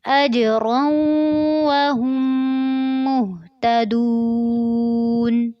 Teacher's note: أجرا میں جیم کے اوپر قلقلہ کرنا ہے اور را کو پر کرتے ہوئے واو کے ساتھ ملانا ہے اور ساتھ میں غنہ بھی کرنا ہے، اور وہم پہ ہا کو میم مشدد کے ساتھ ملانا ہے اور ساتھ غنہ کرنا ہے. اجرا وہم مہتدون.